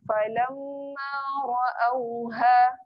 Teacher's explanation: ha yang berada di pangkal kerongkong. Okey, yang ni jangan ditekan, jangan bunyi ra'auha.